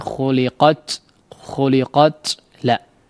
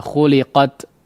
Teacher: Kedua sisi makhraj ya. Artinya ujung lidah yang dipertemukan atau ditempelkan kepada pangkal gigi seri atas ya, maka ditekan ya dengan kuat sehingga tidak menyebabkan udaranya terlalu banjir begitu ya. Khuliqat la ya, tidak begitu, tapi khuliqat qad sekedarnya saja. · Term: sifat syiddah